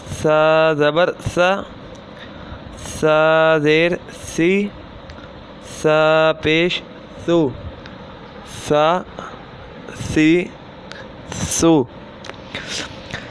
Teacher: سا جو ہے وہ زبان کا سرا اور اوپر کے اندرونی کنارے سے ادا ہوتا ہے